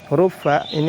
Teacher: huruf fa ini harus dialirkan karena memiliki sifat apa? Sifat rakhawah dan sifat hams. Dialirkan. Afwaja, tidak boleh dibaca afwaja.